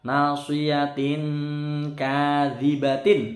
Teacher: tanwin ketemu kaf dengung lama, bacaan ikhfa